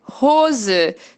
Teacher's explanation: o H no início da sílaba, ela vai ter esse sonzinho de esse R, que é o nosso R normal de muitos brasileiros, sem vibrar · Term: R sem vibrar